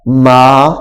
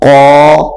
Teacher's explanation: اگر الف سے پہلے باریک حرف ہو، یعنی مثال کے طور پر یہ دیکھیں میم، یہ موٹا نہیں ہے، یہ باریک ہے۔ اب میم، الف سے پہلے میم ہے، یہ باریک لفظوں میں سے ہے، باریک حرفوں میں سے ہے، تو یہاں پہ الف بھی باریک ہو جائے گا، میم الف زبر ما، ما، اب اس کو ما نہیں کر کے پڑھیں گے، یہ غلط ہو جائے گا، جیسے ہم نے قا، اس کو ما، قا، ما، یہاں پہ الف باریک ہو گیا، یہاں پہ الف موٹا ہو گیا ہے۔